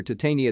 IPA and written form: taɪˈteɪniə (titania)